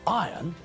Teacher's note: The word is spelled I-R-O-N, but when we pronounce the word, we don't pronounce the letter R.